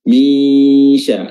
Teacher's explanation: makhraj huruf shin adalah pertengahan lidah atau wasatul lisan, diangkat bertemu dengan langit-langit tengah. Min sya, dan diberi dengan juga sifat tafasyi, sifat yang membuat udara dan nafas tersebar di permukaan lidah.